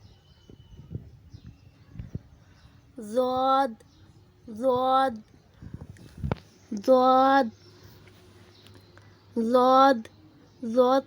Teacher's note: جب زبان کی نوک اوپر والی 5 داڑھوں کی جوڑ سے لگے تو ضاد ادا ہوتا ہے